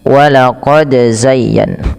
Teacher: pantulkan huruf dal ketika huruf dal tersebut sukun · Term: qalqalah